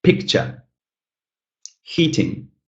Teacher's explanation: 2 syllable words with the first syllable stressed